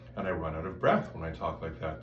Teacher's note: I'm allowing the air to flow through the throat without becoming a vibrating column of air. There's air that's not being used to create sound.